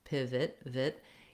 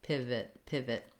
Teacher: You can hear how it has a reduced vowel. So there's no O sound, there's no length on that syllable. I just want to be very short with a reduced vowel, I, pivot, pivot.